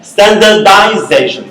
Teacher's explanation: The stress changes from the initial syllable to the middle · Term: stress pattern